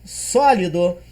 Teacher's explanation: A palavra sólido, ela é uma palavra trissílaba, e vindo de trás para frente, ó, dó, li e só, eu percebo que a antepenúltima sílaba é a mais forte, razão pela qual ela é acentuada tonicamente e graficamente como uma proparoxítona.